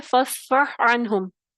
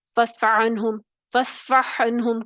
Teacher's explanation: عین ہا وسط حلق سے، وسط حلق سے ادا ہوگا